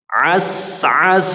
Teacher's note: Berikan aliran pada huruf sin dan tidak atau jangan sampai sin menjadi qalqalah ya.